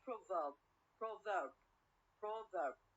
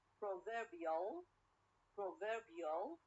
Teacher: i change the stress or the stress is changed from the first syllable to the second syllable